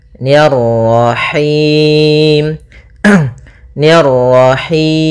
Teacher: Ni tipis ketemu ro yang ro tafkhim. Ro tebal maka nirro.